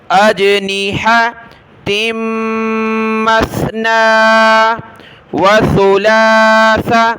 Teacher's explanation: یہاں سا پر آپ نے زبان نکالنی ہے